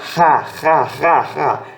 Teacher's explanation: Mas ela não tá com a sílaba tônica. Ela somente tem uma aspiração que vai transformar o som dela. Então essa letra vai ter um som mais na garganta.